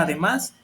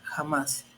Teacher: llevan acento en la última sílaba o última vocal que es la a